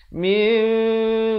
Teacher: menukar daripada bunyi nun kepada bunyi mim. Yang mana mim itu bibirnya di atas dengan bawah itu hampir bersentuhan saja. Very light mim. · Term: iqlab